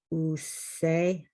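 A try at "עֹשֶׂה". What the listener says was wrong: Ose. No, it's O. That dot's at the top there. That belongs to the ayin. Ose.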